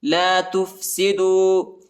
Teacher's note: دال کے بعد جو ہے واو ساکنہ آیا ہے، اس کو تقریباً 1 سیکنڈ تک کھینچنا ہے